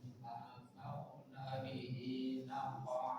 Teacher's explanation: di qaf dia sukun, maka qalqalah sughra dari tengah kata